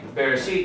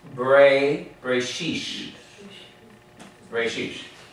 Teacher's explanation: So tav becomes sav. So that's how they soften their T to an S sound. So instead of saying Bereshit, they say, they'll even give this a quicker read for that Shiva there, that short E sound, and they're going to say Bereshish.